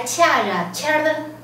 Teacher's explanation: 声音变长变弱，好，四声提高一格变一声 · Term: 四声变一声